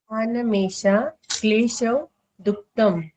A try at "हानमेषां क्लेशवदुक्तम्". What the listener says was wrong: आपका ना जो माँ का प्रोनाउंस है वो आपका छूट जा रहा है, या तो आप ध्यान नहीं दे रहे उस चीज